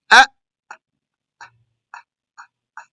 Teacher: That's the hamza. Then that comes from the throat.